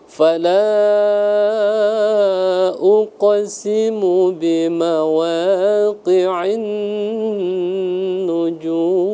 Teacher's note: Jadi ditahan selama 2 harokat karena gunnah musyaddadah ya, wajib al-gunnah, jadi dihukumi wajib didengungkan ya.